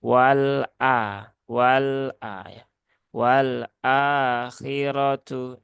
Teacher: Dia tidak punya sifat syidah Ya sifatnya itu adalah tawassut ya maka ketika sifatnya adalah tawasud ya tunaikan saja tawasudnya alirkan